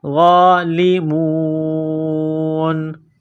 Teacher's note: وا کے اوپر کڑا زبر ہے، 1 الف کے لمٹ میں کھینچنا ہے